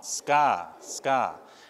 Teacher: we don't aspirate those hard consonants when they come after an s